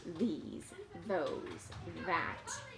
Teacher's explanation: here we are using our voice so we have to feel the vibrations in our throat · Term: voiced th